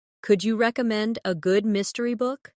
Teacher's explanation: Notice how the stress naturally falls on recommend and mystery.